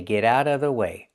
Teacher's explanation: Get out of out of the T in out changes to a fast D because it's between vowels. And what about the VV sound in of? Well, you don't have to make that sound. And most people don't.